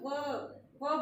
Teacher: नीचे वाले होठ के साथ स्पर्श कर रहे हैं, तो व बोल के देखिए, व बोलते ही दांत होठ से स्पर्श कर रहे हैं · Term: दंत्योष्ठ